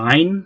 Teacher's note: a voiced pharyngeal fricative or a kind of pharyngeal approximant